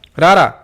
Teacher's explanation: ਵੇਖ ਸਕਦੇ ਹੋ ਰਾਰਾ ਕੰਬਵੀਂ ਧੁਨੀ ਹੈ ਕਿਉਂਕਿ ਇਸ ਦੇ ਉਚਾਰਨ ਵੇਲੇ ਜੀਭ ਵਿੱਚ ਕਾਂਬਾ ਜਿਹਾ ਪੈਦਾ ਹੁੰਦਾ ਹੈ ਤੇ ਜੀਭ ਵਾਰ-ਵਾਰ ਬੂਟ ਨੂੰ ਛੂਹਦੀ ਹੈ